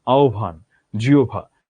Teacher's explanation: হয়ের সাথে যদি ব যুক্ত হয় তাহলে বয়ের আমরা মহাপ্রাণ উচ্চারণ পাবো।